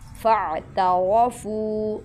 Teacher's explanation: را موٹا پڑھیں گے، فو کو لمبا کریں گے